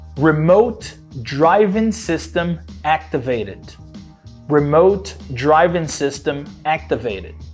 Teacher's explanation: o sistema em si fala com esse R que a gente chama de R retroflexo